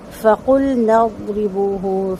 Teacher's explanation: فَقُلْنَا اضْرِبُوهُ، فَقُل میں لام کو ہلانا نہیں ہے اور نون کو ضاد سے ملانا ہے، ضاد کو بہت اچھے سے پر کرنا ہے، ہولڈ رکھنی ہے اس کی آواز کو، را کے زیر کو باریک پڑھنا ہے اور باوا پیشبو دو حرکت لمبا، ہا لمبا نہیں ہوگا۔